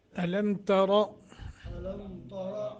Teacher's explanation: لم کو لمبا نہیں کرنا، را کو موٹا کرنا ہے